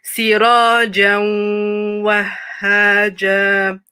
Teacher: So the tanween merges into the next letter.